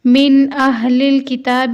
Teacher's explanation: من اہل الکتاب، یہاں پر نون ساکن کے بعد حمزہ آیا ہے، یعنی حروف ہلکی ہے تو یہاں غنہ نہیں ہوگا۔ ہا سینے سے ادا ہونے والی ہا ہے اور کاف نرمی سے پڑھا جانے والا کاف ہے۔